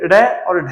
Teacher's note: ड और ढ के उच्चारण में आपकी जीवा एक समय होता है जब ऊपर उठती है और दूसरे समय गिरती है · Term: उत्क्षिप्त व्यंजन